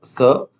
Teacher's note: स एक उष्ण व्यंजन है। इसके उच्चारण में वायु दांत और तालु के बीच घर्षण पैदा होती हुई तीखी सीटी जैसी आवाज के साथ निकलती है।